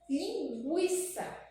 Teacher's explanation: Mas se eu escrever aqui a palavra linguiça, percebam que quando eu falo linguiça, eu consigo sentir o som do G isolado e o som do U